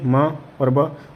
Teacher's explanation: म और ब दोनों ओष्ठ हो गए आपके